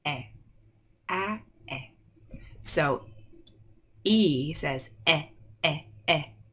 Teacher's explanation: when you say short e the mouth is a little more closed